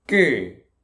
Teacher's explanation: Strong sound, but it's not aspirated. G. This is not moving. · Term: double consonant